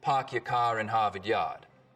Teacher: The stereotypical Boston accents, of course, are non-rhotic, meaning no R sounds in park your car in Harvard Yard.